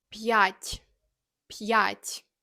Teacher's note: For example, the word for 5 is пять. The apostrophe forces you to say the hard P and then the distinct ya sound.